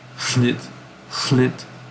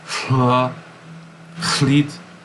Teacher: devoiced L, so it's like a la, but not with the resonating in your cavity